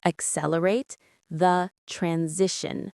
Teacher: Stress on the second syllable of accelerate and the second of transition.